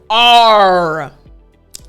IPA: r